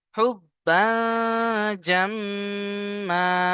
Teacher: আয়াতের শেষে দু জাবার আসার কারণে এক জাবারকে ছেড়ে একালিপ পরিমাণ টান দিয়ে পড়ব